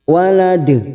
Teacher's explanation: Walad, kita pantulkan ujungnya. Qalqalah kubra karena mati di akhir kalimat dan dibaca wakaf.